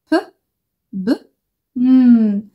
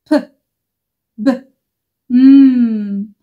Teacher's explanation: علشان الشفايف مقفولة فيهم كلهم. بنقفل الشفايف وبنخرج الساوند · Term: بايليبيال